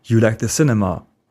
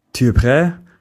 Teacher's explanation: Notice that Tu still begins with its full sound before a vowel. Unlike je, it doesn't lose its vowel or take an apostrophe.